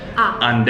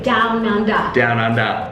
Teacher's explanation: We don't really pronounce the E R sound, it's always an A sound.